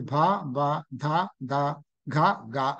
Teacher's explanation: అంటే మహాప్రాణాలు అల్ప ప్రాణాల కింద మారాయి అని గుర్తుపెట్టుకోవచ్చు